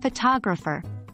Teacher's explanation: in photographer the stress moves to the second syllable